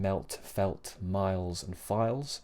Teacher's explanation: if the L comes before a consonant, like in melt, felt, miles, and files, then it should be dark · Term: dark L